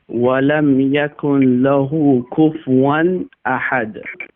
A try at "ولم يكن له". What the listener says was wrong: Yes, I also hear the pronunciation of noon in ولم يكن له. The noon is completely merging into lam, so the pronunciation of noon won't be there. So ولم يكن له without noon.